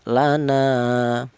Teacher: Kemudian ada alifnya atau dibalik ada alif di mana alif ini didahului huruf yang berharakat fathah ini dibaca mad thobi'i panjangnya satu alif atau dua harakat